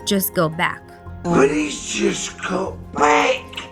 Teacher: We cut the T from just before the consonant just got, and now the word got loses its T sound at the end, which is characteristic of the Cockney accent.